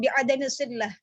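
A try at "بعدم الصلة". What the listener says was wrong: Lamnya jangan ditasydid, bukan sillah, tapi bi'adami silah. Silah.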